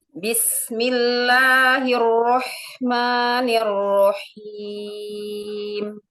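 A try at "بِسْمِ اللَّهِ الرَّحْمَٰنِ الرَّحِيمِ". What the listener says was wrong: Huruf H jangan masuk ke ro, jangan roh, rohim. Jadi hanya kayak tasydid. Rohim, rohim. Terpisah ro dengan him. Jadi hati-hati jangan haknya masuk ke huruf ro ya.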